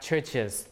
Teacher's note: so what we do is we insert a vowel in there and a vowel is either a schwa or an e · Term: insertion of the sound